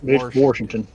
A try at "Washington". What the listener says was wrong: Oh, you got that R in there. Yeah, for us, the R is silent, like the P in swimming.